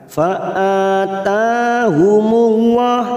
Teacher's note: lam jalalah yang didahului dhammah kita baca tafkhim